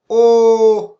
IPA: ɔ: